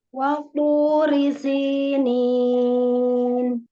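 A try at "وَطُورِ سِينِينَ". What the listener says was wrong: Wawunya jangan ada watu. Tipis dulu wawunya baru to. Waturi sinin.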